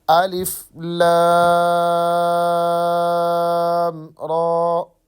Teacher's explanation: را کو ہم نے 1 الف کی مقدار لمبا کرنا ہے، زیادہ نہیں کرنا